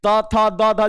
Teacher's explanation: तो दंत से त थ द धिए जीभ और दांत सट रहा है